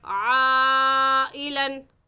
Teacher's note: अलिफ मद्दा आ गया, अलिफ से पहले ज़बर है तो हुरूफ मद्दा के बाद हमज़ा उसी कलमे में है। हुरूफ मद्दा के बाद हमज़ा उसी कलमे में है, इस वजह से इसको मद्दे मुत्तसिल कहेंगे और इसकी मिक़दार 4 अलिफ है और ऐसे पढ़ेंगे आइलन।